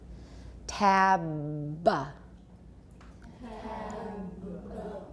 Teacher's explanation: Now, usually we only voice it halfway through and then we let go of the voicing and we stop voicing. But you should be able to produce a fully voiced final B, and that's difficult.